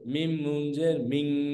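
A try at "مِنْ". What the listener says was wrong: মিং, কেন কেন গুণা করতেছেন, কেন কেন তো হামজা আছে, ছয় রূপের মধ্যে হামজা আছে, এখানে গুণা করার কোনো সুযোগ নাই, মিম নুন জের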